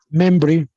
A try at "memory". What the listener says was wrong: Como decir memory, pero le quitas la O. Con la única diferencia que muchos de ustedes están rodando la R.